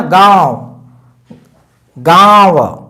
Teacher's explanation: जैसे हम लिखते हैं ना गांव, गांव, तो उस पे जो मात्रा लगी है गांव, तो नाक से भी निकल रही है, मुंह से तो निकल ही रहा है, नाक से भी आ रहा है झन्नाहट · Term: अनुनासिक